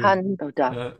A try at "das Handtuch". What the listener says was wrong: Make sure to open your mouth and die Haar. Don't say hand. So your mouth should be open like if you're a dentist. If you're going at a dentist, yeah, Handtuch. And the CH has this vibration at the end because it comes after a U, Tuch.